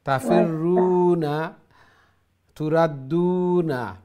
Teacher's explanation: ওই তাফিরুনা পেশের পরে ওয়াও সাকিন, আর তুরাদ্দুনা পেশের পরে ওয়াও সাকিন, পেশের পরে ওয়াও সাকিন হলে এক আলিফ লম্বা হয়।